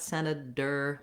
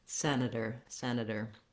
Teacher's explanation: So basically, it sounds the same as we would say a D in the middle of words, which is a flap. My voice is on, I'm going up and lightly touching up for that T and D position, and then just dropping right back down. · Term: flap T